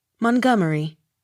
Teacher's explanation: Accent on second syllable.